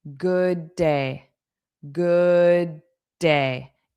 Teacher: So, we have good d d and then we had day d. So, we'll only pronounce one of those d's.